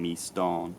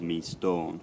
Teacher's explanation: the vowel in starn had just become more closed and more rounded, so rather than being me starn, it was me storn.